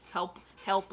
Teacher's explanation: if you're using the h in help that's a feature of received pronunciation